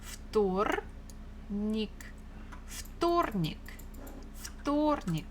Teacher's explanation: Stress falls on O.